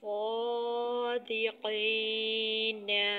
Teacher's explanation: اردو میں الف بالعموم قدر موٹی آواز کے ساتھ ادا ہوتا ہے، جیسے مال اور حال کا الف، لیکن قرآن مجید میں الف نہایت باریک ادا ہوتا ہے، البتہ جب وہ موٹے حرف کے بعد آئے جیسے صادقین۔ صاد موٹا حرف ہے تو اس لیے موٹے حرف کے بعد الف موٹا ہی ادا کیا جائے گا، صادقین۔ اور ظالمین، تو اس صورت میں اس حرف کے تابع ہو کر وہ موٹا ہی پڑھا جائے گا۔